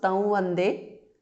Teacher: So it becomes Tam Vande. Anuswara changes to the nasal of Va.